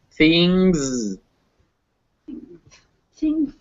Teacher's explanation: it's that NG fused together into that one sound